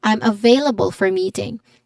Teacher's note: Available, it has stress on the second syllable. There's still a diphthong a sound, a diphthong sound here in ve, in the second syllable.